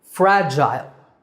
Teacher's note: pronounce the word in American English it's pronounced fragile fragil fragile in British English the second syllable is Gile